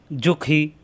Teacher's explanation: খ কণ্ঠনালীর শেষ অংশ